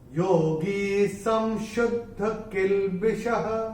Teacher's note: अनुस्वार के बाद जब श आएगा तो अनुस्वार का उच्चारण होगा म · और जो विसर्ग जो आ रहा है श के बाद वो विसर्ग चरण की समाप्ति पे आ रहा है। तो चरण की समाप्ति पे जब विसर्ग आएगा तो उसका उच्चारण केवल और केवल ह ही होगा। योगी संशुद्ध किल्बिषः, ऐसे योगी संशुद्ध किल्बिषः, ऐसे करके आएगा।